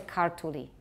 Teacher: So in as far as Georgian has stress, it's on the first syllable.